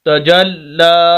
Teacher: لام کے اوپر شد ہے، سخت کر کے پڑھنا ہے اس کو، آواز کو روک کر۔